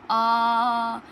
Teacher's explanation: तो बड़े आ को बोलिए आ, तो मतलब इसमें मुख अपना पूरा खुल रहा है, तो ये फुल्ली ओपन हो गया। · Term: विवृत स्वर